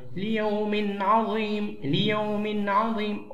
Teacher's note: هنا نظهر التنوين لأن بعده حرف العين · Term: إظهار